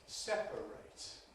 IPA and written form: ˈsepəreɪt (separate)